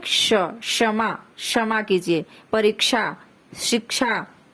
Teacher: हम छ भी इसको नहीं कहते हैं, श भी नहीं कहते हैं, छ और श को मिला करके हम बोलते हैं